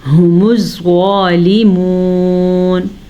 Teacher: زوا کو آپ نے موٹا کر کے پڑھنا ہے اور کھینچ کے پڑھنا ہے, کیونکہ زوا کے اوپر کھڑی زبر ہے.